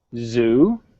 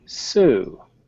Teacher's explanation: the main difference is z is voiced so we have the vibration here and Sue there's no vibration